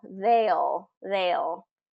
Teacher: it's they, the whole pronunciation of they, and then that dark L.